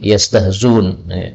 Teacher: boleh dibaca yastahzun dengan menghilangkan hamzahnya